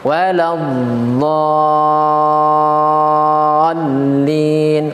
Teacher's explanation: Waladh. Dan huruf dot dia juga punya sifat istitolah ataupun memanjang bunyinya, sehingga ketika kita membaca waladh itu kasih sifat istitolah, yaitu dipanjangkan sedikit bunyinya seperti ini.